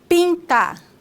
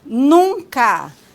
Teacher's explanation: o ar passa pelo nariz